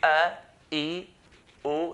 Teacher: No, alif or the hamza, it comes from the throat. If you say a, e, o, you find that hamza comes from the throat.